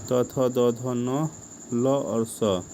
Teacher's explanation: इसका उच्चारण स्थान दांत और जीभ है, इसे दंतव्य भी बोला जाता है।